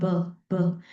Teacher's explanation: if you put a finger at your neck, okay, at the Adam's apple, you will feel the vibration when you produce the sound b, b. More vibration will be there rather than the sound p. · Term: voice